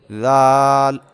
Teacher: ذال کو ادا کرتے وقت زبان کا سرا آپ نے اوپر کے دانتوں کے اندرونی کنارے سے لگانا ہے